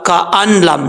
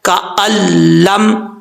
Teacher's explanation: اور next line پہ ہے، لاسٹ لائن جو ہے اس پیج کی، یہاں پر بھی دیکھیں کاف کے بعد الف حمزہ ہے، حمزہ کے بعد نون ہے، پھر لام ہے، حمزہ کے بعد جو نون آ رہا ہے نون کو ہم گرا دیں گے، اس کو نہیں پڑھیں گے، حمزہ لام زبر ال، لام میم زبر لم، الم کا الم، ایسا نہیں ہے کہ ہم اس کو پڑھیں کا ان لم، نہیں، نون گر جائے گا کا الم.